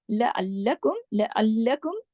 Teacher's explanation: लअल्लकुम सख्ती से जोड़ के पढ़ना है, लाम पे तशदीद है, दो लाम है।